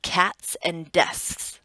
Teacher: when you put your hand on your vocal cords and say those words, you'll notice there is no vibration